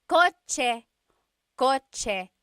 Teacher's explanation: In the Tagalog alphabet, there is no letter C in Tagalog naturally occurring. The ch sound is a TS combination. Coche, coche, car is coche with a TS spelling.